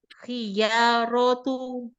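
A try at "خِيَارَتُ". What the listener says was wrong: नहीं, या अभी भी लंबा हो रहा है, खुई या रौ तू, या लंबा नहीं करें। लंबा कर रही हैं, खियारतु, ऐसे नहीं, खियारतु। यहाँ पे सिर्फ जबर है ना, नहीं, और छोटा रखें, और छोटा, खिया खिया।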